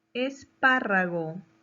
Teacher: lleva la mayor fuerza de voz en la antepenúltima sílaba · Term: palabra esdrújula